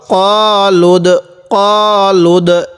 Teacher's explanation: এই দালটা উচ্চারণের সময় একটু ধাক্কা দিয়ে পড়বো কারণ দালটি হলো কলকলার হরফ